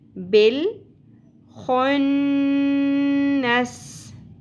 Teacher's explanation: نون مشدد پہ ہم نے غنہ کرنا ہے